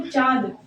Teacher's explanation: चंद्र बिंदु के साथ इसका उच्चारण नासिका और मुख से होता है। जैसे चांद, चांद में चांद के ये जो शब्द है चांद, चा के ऊपर अगर चंद्र बिंदु लगा है तो इस चंद्र बिंदु का मतलब होता है कि अनुनासिक, अनुनासिका, ये अनुनासिका से संबंधित है ये।